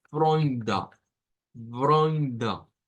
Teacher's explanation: lo vamos a pronunciar como con una R gutural, con una OI y luego con un schwa al final. No es D, es D.